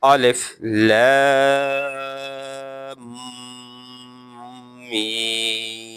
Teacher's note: I read first Alif, then Lam, and long the voice of Lam because of Madda. Because Madda sign is over Lam.